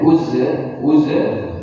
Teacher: Jangan menjadi mantul karena huruf za bukan huruf qalqalah.